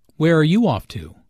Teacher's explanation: Notice the falling intonation since this is an information question, not a yes-no question.